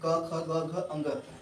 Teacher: क वर्ग में जितने हैं क ख ग घ अंग ये सब कंठ से बोले जाते हैं